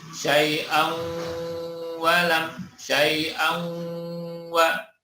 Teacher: Syai'an, tanwinnya masuk ke huruf wawu. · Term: idgham bi gunnah